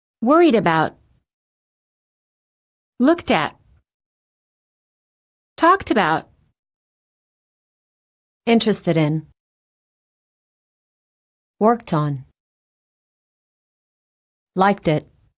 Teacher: It's especially important for you to learn to link words with ED endings. The final T and D sounds are much easier to pronounce if they're connected to the vowel that follows it. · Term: Linking